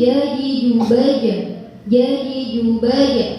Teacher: membunyikan qalqalah yang benar adalah dengan membunyikan suaranya condong ke harokat fathah. Bukan jadi jubaj, jadi jubaj.